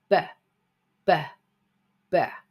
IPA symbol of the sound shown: b